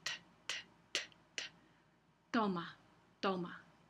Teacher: Bueno, vamos a pasar a los sonidos dentales. Es cuando la lengua toca los dientes superiores, la parte de atrás de los dientes. Entonces, por ejemplo, la T en español. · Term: sonido dental